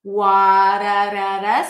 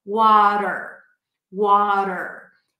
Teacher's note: it sounds like a very light D sound or like a very short R sound, if you have that in your language. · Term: flat T